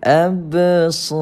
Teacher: Kita panggil sebagai qala surah. Lantunan kecil pada huruf ba. Seakan-akan tuan-puan kita tambahkan padanya huruf i.